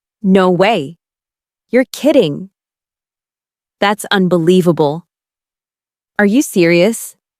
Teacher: Feel the rise in your voice when you express surprise.